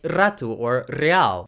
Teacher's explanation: In some places in Portugal, and especially among older people in Portugal, you might even hear a rolled R, a R sound, like rato or real.